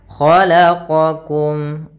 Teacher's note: Khalaqakum, kha tebal isti'la, qa juga sama.